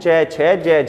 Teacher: तो इस बात का मतलब है कि ऐसे वर्ण जिनका उच्चारण करते समय वायु फेफड़ों से जब निकलती है स्पर्श तो करती है लेकिन साथ में एक रगड़ पैदा करती है, घर्षण पैदा करती है, उसी के साथ जो है बाहर निकलती है। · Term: स्पर्श संघर्षी व्यंजन